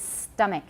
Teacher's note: Remember not to aspirate the T.